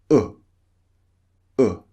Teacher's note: as in pull notice the shape of the lips oh oh they're quite rounded not very rounded but quite rounded